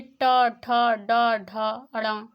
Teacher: 1 number पे कंठ से आवाज़ आई, कंठ के बाद में तालु, फिर उसके बाद में ट, ठ, ड, ढ, अड़ा। इसमें क्या हमारी जीभ टर्न करती है, मुड़ जाती है, मुड़ करके हमारे तालु में टच करती है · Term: मूर्धा व्यंजन